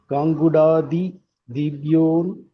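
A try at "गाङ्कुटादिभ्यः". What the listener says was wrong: Gangkuta. Not kuda. Gangkuta. Not gu. Ku.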